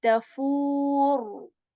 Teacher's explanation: at the end there is letter ra with dhamma on it, and you will make this ra heavy